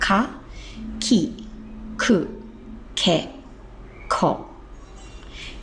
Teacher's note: the normal hiragana, they're pronounced with a burst of air at full strength